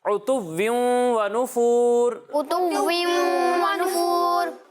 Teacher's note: आइन की अदायगी वाज़े होनी चाहिए, हमजा से मिलना नहीं चाहिए